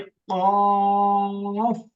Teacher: জিহ্বার গোড়া তার বরাবর উপরে তালুর সঙ্গে লাগাইয়া ডাল কাকের মতো মোটা আওয়াজে